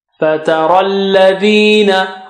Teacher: Ra is thick, and after ra you have ya and alif, so we don't pronounce them because they have no signs on them.